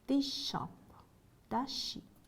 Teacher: Z, post alveolar before sh